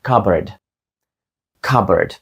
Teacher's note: не звучить як Cup Board воно звучить як cbard cbard тобто літера P пропускається і це слово звучить злитно не як два різні слова а як одне слово без зупинок